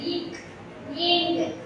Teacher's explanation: இக் இங் ஆகிய இரு மெய்களும் நாவின் முற்பகுதி அன்னத்தின் அடிப்பகுதியை பொருந்துவதால் கிடைக்கின்றன.